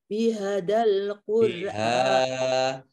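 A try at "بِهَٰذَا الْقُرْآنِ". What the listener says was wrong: hanya panjang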